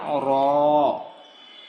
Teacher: জিহ্বার আগার পিঠ তার বরাবর উপরে তালের সঙ্গে লাগাইয়া